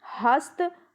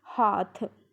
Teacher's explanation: ये तय अलप प्राण है, थ महाप्राण है।